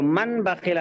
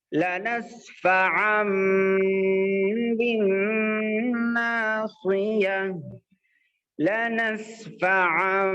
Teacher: یہاں پر تنوین کے بعد با آیا، تو با آنے کی وجہ سے یہاں پر نون بالکل سائلنٹ ہو جائے گا، اور نون کی آواز جو تنوین کے اندر بھی آتی ہے وہ بھی بالکل سائلنٹ ہو جائے گی، اور اس کو بدل کے میم سے بدل کے پڑھیں گے. نون کی آواز کو میم سے بدل کے پڑھیں گے